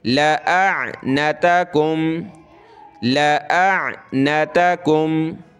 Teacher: اس حمزہ کو عین کے ساتھ ملائیں گے